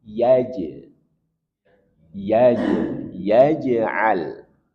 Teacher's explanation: Ada jim yang sukun dan di tengah kata maka hukumnya qalqalah.